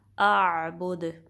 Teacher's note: हमज़ा अक्सल हल्क से निकलेगा और आइन वसतुल हल्क से